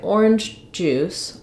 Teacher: you can hear how this first j sound gets a little bit stopped and reduced. I do have to say it a little bit.